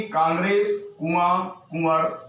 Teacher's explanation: वे स्वर जिनका उच्चारण मुख एवं नासिका दोनों के द्वारा होता है। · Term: अनुनासिक